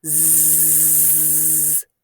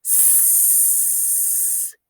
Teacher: There's no vibration or buzzing in your throat. This is called voicing, and we'll talk a bit more about that in a moment.